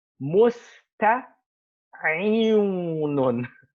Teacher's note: The Arabs just change the waw into a ya, and it becomes musta'inun.